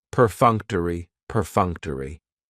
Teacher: That third syllable has the schwa and it's going to end with that long e sound.